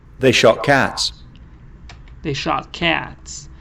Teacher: te can change to ke sound, because the next word starts with ke sound